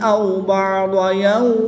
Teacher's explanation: وقف کی حالت میں میم کی 2 زیر کو ساکن کر دیں گے اور جب میم کی 2 زیر کو ساکن کریں گے تو وقف کی حالت میں یہاں پر مد لین عارض ہوگی، 2 سے 3 الف تک کھینچ کر پڑھیں گے